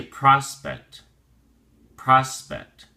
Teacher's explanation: prospect has two syllables and the emphasis or stress is on the first syllable